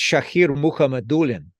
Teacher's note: the accent on the second to last syllable